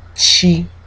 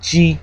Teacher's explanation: the air and then release it we get G and then Chi which is the aspirated version of G